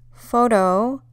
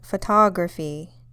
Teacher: the stress in the first one is on the first O, photo, whereas the second one is on the second O, photography. It's where the most emphasis is placed.